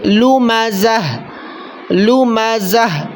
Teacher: وقف میں گول تا ہو تو اس گول تا کو وقف کی صورت میں ہا پڑھتے ہیں